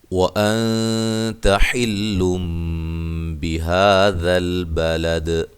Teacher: یہاں نون ساکن کا اخفاء ہو رہا ہے، باریک اخفاء ہے